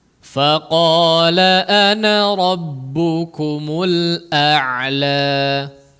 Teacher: Hamzah dulu baru Ain ya jangan Ain dua-duanya ya